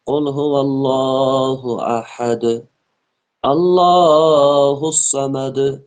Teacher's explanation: لفظ اللہ کو موٹا پڑھیں گے کیونکہ لفظ اللہ سے پہلے زبر آئی۔ اللہ الصمد، الصاد جو ہے یہ بھی پر حروف میں سے، اس کو بھی موٹا پڑھیں گے۔